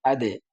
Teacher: এখানে ধাক্কা দিলাম কারণ এখানে দালটা কল করার হরফ কলকলার হরফ